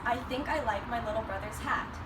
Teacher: in Cockney, they omit H's in the beginning of words. · I sounds become oi, and th sounds can become a V or an H, depending on the word.